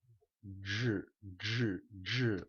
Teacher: la CH sona com a J, però al coll